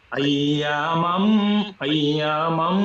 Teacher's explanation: You create a nasal sound without the help of a tongue. জিহ্বার কোনো ব্যবহার ছাড়াই নাকের ভিতরে আওয়াজটা আসবে, এবং at least one আলিফ সেখানে টানতে হবে। আইয়ামাম, আইয়ামাম, এই সাইনটা দেখলে আমরা সাথে সাথে এটা করব। · you create a nasal sound without the help of your tongue. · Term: গুন্না, GHUNNAH